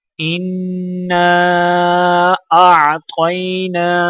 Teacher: الف کے ساتھ چھوٹا مد ہے تو الف کو 3 الف کے برابر کھینچ کر پڑھا جائے گا